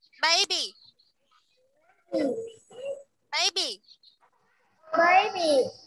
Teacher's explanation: cái chữ bờ phía sau này không bật hơi nha. Hai chữ bờ này không bật hơi hết.